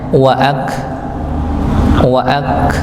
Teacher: keluarnya itu di tempatnya kaf, di tempatnya kaf, dari pangkal lidah bertemu dengan langit bagian keras. Ak nggih, bukan ak tapi ak kerasa nanti di tempatnya huruf kaf itu nggih.